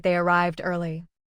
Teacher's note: Arrive ends with a voiced V sound, so the past form ends in D. · There is no extra vowel after arrive. The voice in V continues naturally into D, giving the word one steady beat. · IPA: /d/